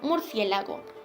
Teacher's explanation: En esta palabra también encontramos un diptongo, porque hay dos vocales, una abierta y una cerrada, y el acento lo lleva la abierta. Es esdrújula, porque lleva acento en la antepenúltima sílaba, y evidentemente lleva tilde, porque las esdrújulas siempre llevan tilde.